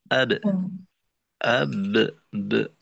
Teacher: অর্থাৎ বায়ের মাখরাজে যাওয়ার সময় এক আওয়াজ, মাখরাজ থেকে পৃথক হওয়ার সময় আরেকটা ফিরতি আওয়াজ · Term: কলকলা